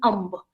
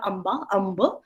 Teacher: Hindustanis pronounce the B in its name as though no vowel followed. For example, amb, not amba, amba.